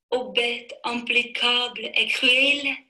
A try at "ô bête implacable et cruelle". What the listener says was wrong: Ну, тут было «impeccable». Вот, то есть ошибок не должно быть все-таки.